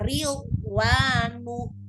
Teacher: Huruf dhad itu memiliki sifat namanya istitolah. Memanjang gitu ya. Jadi selain dia rohwa, dia sedia memanjang itu khusus untuk huruf dhad gitu ya.